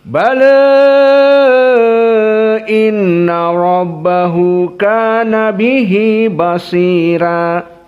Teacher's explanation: tidak apa-apa dibaca dalam keadaan at-taklil, bukan imalah al-kubra dan bukan fathah.